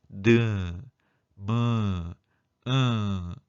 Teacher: 콧소리는 입안의 통로를 막고 코로 공기를 내보내며 내는 소리입니다. 그래서 코가 울려서 나는 소리가 되겠습니다.